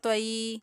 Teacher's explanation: طا کے اوپر زبر اور آگے یا ساکن، یہاں پر یا لین ہو رہی ہے، طا کی زبر کو یا کی طرف مائل کرتے ہوئے پڑھیں گے